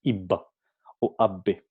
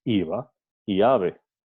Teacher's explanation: Por ejemplo, en iba, ave, no decimos iba o abbe, decimos iba y ave. Entonces, los labios no llegan a cerrarse por completo. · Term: B fricativa